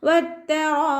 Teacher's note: അലിഫ് മദ്ദിന് ശേഷം അതേ വേർഡിൽ തന്നെ ഹംസയും വന്നു. മദ് വാജിബ് മുത്തസിലാണ്, 4 5 കൊണ്ട് നിർബന്ധമായിട്ട് നീട്ടിക്കൊടുക്കുക കേട്ടോ. വത്തറായിബ്, അവസാനത്തിൽ ബ കൽക്കലയുടെ ലെറ്റർ ആയതുകൊണ്ട് ഫുൾ സുക്കൂന് കൊടുത്തിട്ട് നിർത്തി കൊടുക്കുക. · വത്തറായിബ്, വാവ് ഉച്ചരിക്കുമ്പോൾ ചുണ്ടുകളൊന്ന് സർക്കിൾ ചെയ്ത് കൊടുക്കുക. താക്ക് ശബ്ദ വന്നിട്ടുണ്ട്, 2 ഹർഫുകൾ ഉച്ചരിക്കുന്ന കനം കൊടുക്കുക. റാഇൻ്റെ കൂടെ റാ ഫത്തഹ ആയതുകൊണ്ട് നമ്മൾ ഉയർത്തി ഉച്ചരിച്ച് കൊടുക്കണം.